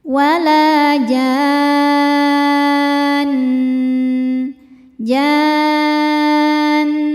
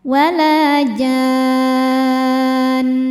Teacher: Mad thabi'inya alif didahului fathah, huruf bertasydidnya nun. Maka jimnya ini kita baca panjang enam harakat, kemudian ujungnya didengungkan ya. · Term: mad lazim mutsaqqal kilmi